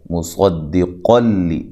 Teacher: اور یہاں نون تنوین کا ادغام ہے لیکن بلا غنہ ہے، غنہ نہیں کیا جائے گا